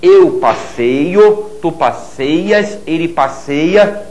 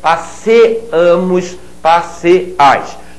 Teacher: Observem que em nós e vós o ditongo desaparece